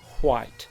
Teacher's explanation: both scottish standard english and scots speakers pronounce wh as hw like white